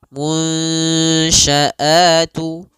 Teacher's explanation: caranya adalah kita samarkan nunnya kepada huruf shin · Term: ikhfa